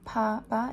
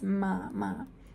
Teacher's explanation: the velum opens and the air comes out of the nose instead of the mouth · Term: bilabial nasal